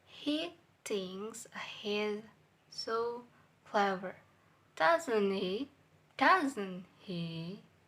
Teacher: And word he is flat level, and doesn't is a high level, and he low level. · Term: falling intonation